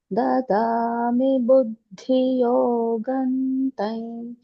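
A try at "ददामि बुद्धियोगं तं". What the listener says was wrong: இந்த புத்தியில அந்த த கொஞ்சம் தெரியாத மாதிரி இருந்து பாக்கெல்லாம் பர்ஃபெக்டா இருந்தது.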